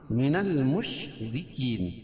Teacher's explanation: را کو باریک پڑھیں گے، کیوں؟ را کے نیچے زیر ہے، اور وقف کی صورت میں یہ مد عارض وقفی ہے۔